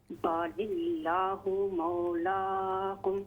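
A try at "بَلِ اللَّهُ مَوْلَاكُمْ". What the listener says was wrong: بل اللہ لمبا کریں لام کو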